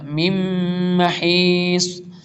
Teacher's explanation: نون ساکن کے بعد پھر حرف یرملون میں سے اس لیے ادغام یرملون ہوگا